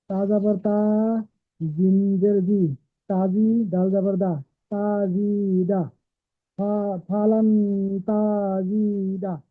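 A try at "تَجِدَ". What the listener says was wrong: তাজিদা নয়, ফালান তাজিদা, তাজিদা আরো তাড়াতাড়ি পড়েন, আরো ফাস্ট পড়েন। ফালান তাজিদা, ফালান তাজিদা।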